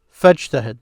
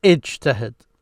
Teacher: they would say fajtahid because they connected this fa then with this command ijtahid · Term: connecting hamza